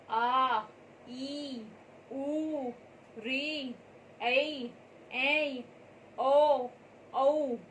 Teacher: दीर्घ स्वरा वे स्वर होते हैं जिनके उच्चारण में ह्रस्व स्वरा से 2 गुना समय लगे और स्वर भी लंबा निकले